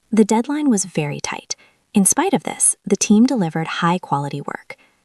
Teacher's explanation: Your voice goes down at the end of the first sentence. Then it goes up slightly on in spite of this and then down again. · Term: intonation